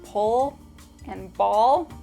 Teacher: One remarkable feature of Miami English is the dark L. If you recall from New York, the dark L is in words like pull and ball.